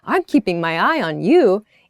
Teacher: we emphasize you with that kind of upward intonation in the sentence, I'm keeping my eye on you, it sounds like I'm expecting good things from you.